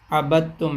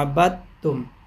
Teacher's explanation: اب یہ دال کا ادغام تا میں کر رہے ہیں تو دال کی آواز بالکل ہی ختم ہو جائے اور وہ تا میں مکمل طور پہ شامل ہو جائے اور ایسے لگے کہ دال کی آواز ہے ہی نہیں